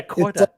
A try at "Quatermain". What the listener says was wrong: It's not quarter. like it would be either Quater, if depending on how you say it. Like you could say Quater, you could say Quat. I just say Quater, like Quater. Like it's not Quarter. She's like Quatermain. It's like that's not his name.